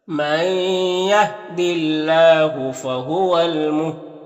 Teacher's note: یہاں پر الف میں کوئی حرکت نہیں، اس کو نہیں پڑھنا۔ یہاں پر وقف کریں گے تو دال کا زیر سکون سے بدل جائے گا، تو پھر دال میں قلقلہ ہوگا